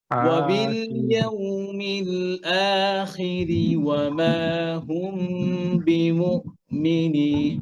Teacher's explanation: আ যেন হামজাটা মোটা না হয়ে যায়, হামজা পাতলা।